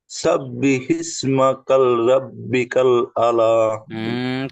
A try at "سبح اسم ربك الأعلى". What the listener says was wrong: কাল দুবার হয়ে গেল। সাব্বিহ ইসমা রব্বিকাল আ'লা। আ'লা।